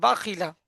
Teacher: লামের উপরে যাবার জবারটি হল হারাকাত হারাকাতের পড়ে তাড়াতাড়ি পড়তে হয় টান দেয়া নিষেধ